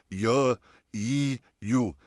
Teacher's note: श में जुबान और ताले में कम गैप है। या में जुबान उठी है, सेम दरमियाना हिस्सा उठा है, लेकिन गैप जो है वो थोड़ा ज़्यादा है शीन के कंपैरिजन में